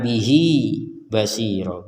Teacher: bihi di sini juga dibaca e panjang dua harakat kalau disambung dengan Basir kalau tidak disambung Inu nah seperti itu harakat e yang disebutkan